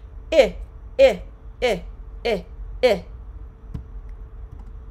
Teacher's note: The pronunciation tips for the short I vowel sound, the I. The lips are relaxed and the middle and front area of your tongue is in a higher area of the mouth.